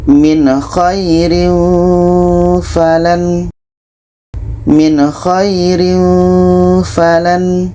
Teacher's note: Jadi di sini ada nun mati bertemu dengan kha. Ini izhar halki, harus dibaca jelas dua-duanya.